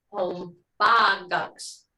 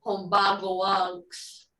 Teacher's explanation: two vowels next to each other aren't usually great in Mvskoke. So usually one drops. In this case, the O drops. So since each one is adding unk, and this V is a vowel, and it's a very important vowel to show the time, O goes away.